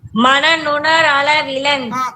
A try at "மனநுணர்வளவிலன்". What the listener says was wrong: அளவிலன் இல்ல, மனநுணர்வளவிலன், மனநுணர்வு அளவிலன் அப்படி இருக்கு. அந்த ஊவை விட்டுறக்கூடாது. இப்ப வா சொல்லணும். மனன் உணர்வளவிலன், அது ஒரே வார்த்தை. மனன் உணர்வு அளவிலன், மனநுணர் வளவிலன்னு படிக்க கூடாது.